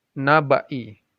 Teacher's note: alif lam itu bertemu dengan Nun langsung dibaca Nun nya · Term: Idgham Syamsiah